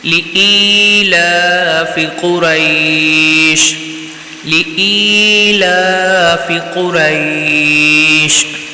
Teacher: لإیلاف قریش، قاف کو پر پڑھنا ہے اور بغیر کھینچے پڑھیں گے، اور قریش یہاں پر مد لین عارض ہے، تو یہاں پر اس لیے اس کو ہم کھینچ کر پڑھیں گے